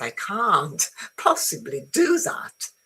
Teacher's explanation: Okay, so can't is nice and long. It has the stress